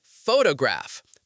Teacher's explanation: We say photograph. The stress is on the first syllable. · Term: syllable stress